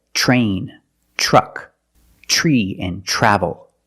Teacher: usually we don't we pronounce it ch ch plus the r sound